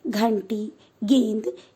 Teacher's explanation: बच्चों, अंग का प्रयोग 2 प्रकार से किया जाता है, बिंदी के रूप में तथा चंद्र बिंदु के रूप में। बिंदी के रूप में इसका उच्चारण नाक से होता है, इसे अनुस्वार कहते हैं